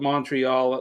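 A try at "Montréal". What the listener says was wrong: love how you say Montreal. Montreal. Montreal. We don't say the T in French.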